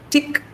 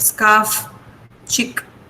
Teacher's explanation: in the last position, final position and medial position, they are not aspirated